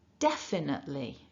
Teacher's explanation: remember we're stressing syllable one